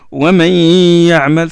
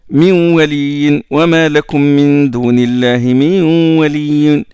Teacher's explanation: on prolonge deux harakat, deux temps. Et le son sort du nez. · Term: nasalisation